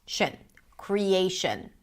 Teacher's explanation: the final syllable is reduced, a schwa